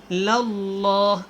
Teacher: اللہ والا لام اس سے پہلے زبر ہے، آپ نے اس کو موٹا پڑھنا ہے اور ہو کو آپ نے لمبا نہیں کرنا۔